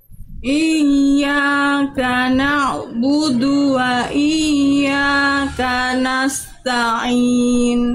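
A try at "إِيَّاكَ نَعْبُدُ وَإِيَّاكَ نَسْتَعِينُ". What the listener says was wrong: sip bagus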